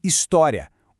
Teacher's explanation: Em história, o I é fraco e o A é forte. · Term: ditongo